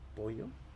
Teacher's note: En pollo ya hay yeísmo. Imponemos la Y en vez de la L.